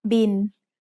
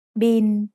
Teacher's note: Thai doesn't naturally have the L sound at the end of a syllable, so it changes to sound like the letter N.